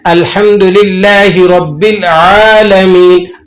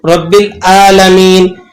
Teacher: عین، آپ نے اس کو عین پڑھنا ہے، جیسے اب اس میں کوتاہی کیا ہوتی ہے کہ اس کو عین کی آواز کو حمزہ کی آواز سے بدل دیتے ہیں، جیسے سورہ فاتحہ میں دیکھیں، الحمدللہ رب العالمین، اب یہ لفظ ہے عالمین لیکن اسے پڑھتے ہیں رب العالمین، ٹھیک ہے؟